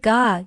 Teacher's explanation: you can feel the back of your tongue blocking your throat, right? The shape of the letter actually looks like the side profile of your tongue in that position.